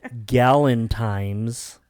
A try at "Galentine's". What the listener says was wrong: M. It's an N. Galentine's.